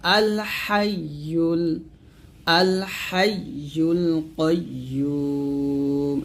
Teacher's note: কাইয়ুমটা মোটা করে বলতে হবে